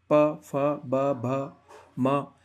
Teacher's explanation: इन सबका उच्चारण करते वक्त आपको प होटो का टकराना होगा ही होगा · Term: प वर्ग, ओष्ठ्य